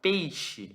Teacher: Esses dois pontinhos aqui, ele se chama tsere. Esse tsere, ele é o E fechado.